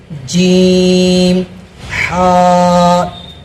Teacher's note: یہ ہا ہے وہ حلق سے ادا ہوتی ہے، درمیان حلق یعنی بیچ حلق سے ہا ادا ہوتی ہے